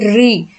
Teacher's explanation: आपकी जीभ बार बार ऊपर आपकी मूर्धा को ऐसे टच करती है, एक कंपन करती हुई , ठीक है, री, तो आप देखेंगे सबसे ज्यादा आपकी मूर्धा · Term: मूर्धन्य